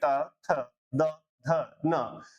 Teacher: ये ध्वनियां सारी की सारी आपकी दंत से दंत यानी दांतों के बीच में आपकी जीवा आती है और उसके बाद इनका उच्चारण होता है। इसलिए ऐसी ध्वनियों को आप दंत ध्वनियां कहते हैं या दंत्य वर्ण कहते हैं। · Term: दंत्य ध्वनियां